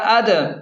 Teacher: دال ساکن ہے اور حروف قلقلہ میں سے ہے تو اسے جھٹکے کے ساتھ پڑھیں گے